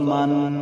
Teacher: گنہ کی مقدار 1 الف کی مقدار ہے